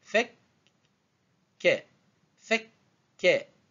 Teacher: Parce que ke, en fait, avec shedda, avec la forme du W, donc elle se prononce double.